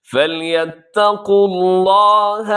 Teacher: لفظ اللہ کے لام سے پہلے پیش ہے، پیش والا حرف ہے، تو اس لیے ہم اس کو موٹا کرتے ہیں